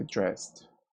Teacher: The double S is pronounced as the S sound and it's voiceless, so we say dressed.